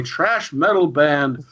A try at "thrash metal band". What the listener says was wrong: Trash metal band Megadeth. It's you mispronouncing the word thrash.